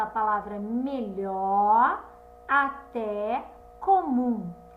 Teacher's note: em cada palavra que sílaba foi pronunciada com mais intensidade é a última sílaba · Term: sílaba tônica